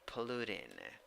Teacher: 3 syllables. The second syllable is the one that is stressed. First syllable, schwa, neutral, second syllable, the vowel, oo, oo.